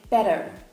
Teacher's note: Most American accents will have more of a flap T sound, so instead of saying better, they would say better.